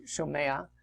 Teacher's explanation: there's that extra, what's called a furtive patach vowel there before the ayin